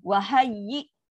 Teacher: hamzah sukun. Wahayyi. Putus bunyi. Sifat syiddah.